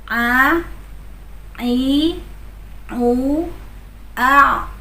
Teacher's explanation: huruf-huruf yang keluar dari tengah tenggorokan. Yang pertama adalah ain.